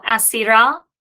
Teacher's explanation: it reduces to a composite schwa, the hatef pathak, and that is under the influence of the guttural